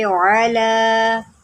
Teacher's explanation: लाम के ऊपर खड़ा ज़बर है तो इसको लंबा करें एक अलिफ के बराबर।